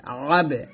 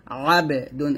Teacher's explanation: আইন বা জবর আবে, এখানে বাটা কলকল করতে হবে